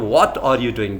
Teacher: तो व्हाट पर ज़्यादा स्ट्रेस आया और डूइंग पे कम